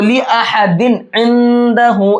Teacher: इस तनवीन को हम साफ साफ पढ़ेंगे, इसमें इजहार करेंगे